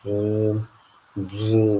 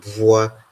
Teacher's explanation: the BWU is a long labialized sound